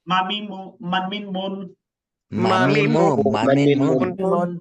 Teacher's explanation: লাগবে না বুঝতে পারছেন ভাই জিহবাও লাগবে না দাতও লাগবে না জাস্ট দুই ঠোঁট দুই ঠোঁটে যে শুকনো স্থান আছে এই স্থানকে একত্র করে উচ্চারণ করবেন · দুই ঠোঁটের শুকনো জায়গা হইতে মিম